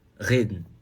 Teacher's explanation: não precisa vibrar tanto assim não. Vibra só um pouquinho. Reden. E tá resolvido.